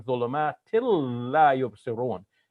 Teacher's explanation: So when the noon ends one letter, and the next letter is the lam, we are eliding the noon into the lam. So we're saying ظلمات لا يبصرون, and we're making the L doubled in that case.